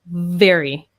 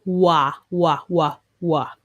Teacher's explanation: V, your teeth are touching your bottom lip. Very. W is an open sound.